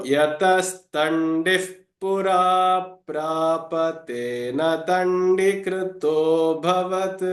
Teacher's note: If you look at the visarga here, now this visarga is followed by pa, and therefore the visarga takes on the pronunciation of what? Of the F, fa sound